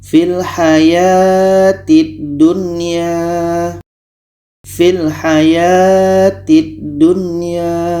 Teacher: Nun jelas, ya jelas. Dan di sini tidak boleh dengung. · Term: izhar wajib